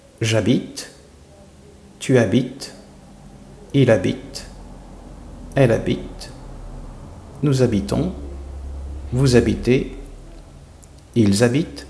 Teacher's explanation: Instead of je, you will have j', and then liaisons between the subject and the verb